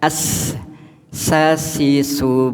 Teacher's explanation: disebabkan oleh dua pita suara terbuka dan tidak bergetar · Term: Hames